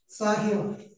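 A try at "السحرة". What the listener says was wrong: Bukan, masa sahiro? Sahiro ada alif, enggak ada. Saharota ya dia wazan fa'ala di kafaro dalam surat apa bahasa kan?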